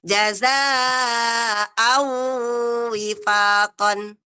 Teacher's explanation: Memperpanjang suara saja, tetapi tidak dengan suara dengung. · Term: tidak dengan dengung